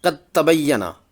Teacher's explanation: ادغام متجانسین کے قاعدہ کے بموجب تا مشدد کو ہی پڑھیں گے